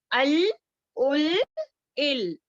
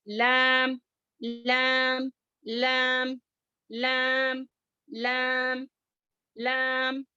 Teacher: اس کا مخرج کیا ہے، زبان کا کنارہ اور اوپر والے دانتوں کے جڑوں کے جانب تالو والے حصے سے ادا ہوتا ہے